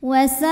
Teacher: Hamzahnya a pada kata saat. Maka sin dipanjangkan boleh 4, boleh 5 harokat. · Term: mad wajib muttasil